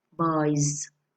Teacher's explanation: Buys. We have the vowel sound at the end of the word, the vowel sound, buy. So we pronounce the S as Z